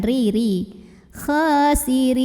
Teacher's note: Khasirin, kha-nya dibaca tipis tarqiq karena barisnya di bawah. Pangkal lidah datar, tidak perlu dinaikkan